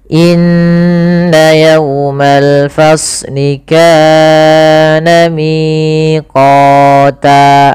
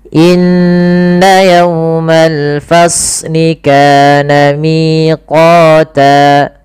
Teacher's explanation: Ini kepanjangan. Cukup saja 2 harakat dengan menaikkan sedikit suaranya. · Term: mad tabi'i